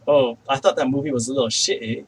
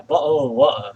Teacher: people from certain areas of the UK, they like to use a glottal stop instead of a T